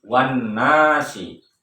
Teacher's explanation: maka alif lam dibaca melebur kepada huruf sesudahnya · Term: hukum bacaan al-syamsiyah